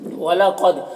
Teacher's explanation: قاف حروف مستعلیہ میں سے، دال میں قلقلہ ہو رہا ہے